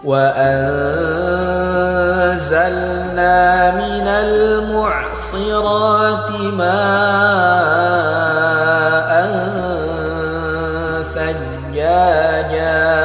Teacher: Perhatikan tanwin berjumpa dengan huruf tha, maka hukumnya ikhfa. Harus kita dengungkan 2 harokat dan disamarkan hurufnya.